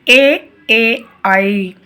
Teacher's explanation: ఇవి పలికేటప్పుడు మనం అ plus ఇ అనే కలయిక వలన ఐ అనేది వస్తుంది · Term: కంఠ తాలవ్యాలు